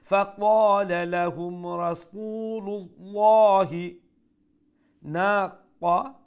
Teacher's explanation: কোন পেশের কথা কইলাম, ও যে রাসূলুল লামর উপরে যে পেশ ও পেশের কারণে লফজে আল্লাহর লামরে আমরা ফুলমাত করি মোটা করে উচ্চারণ করবো । ফাকালা লাহুম রাসূলুল্লাহি নাকাতাল্লাহি, না নুন আলিফ না এক আলিফ